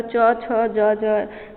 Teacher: च का उच्चारण स्थान तालु के स्पर्श से होता है।